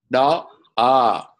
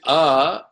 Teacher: when you say ah it come from the throat this is the origin